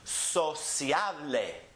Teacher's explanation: Divide it into syllables. It ends with the vowel, so it's the next to last syllable that gets emphasized.